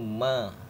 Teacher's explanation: Makrop atau tempat keluarnya huruf ma ini atau mim yaitu bibir bawah dan bibir atas ketemu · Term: huruf bibir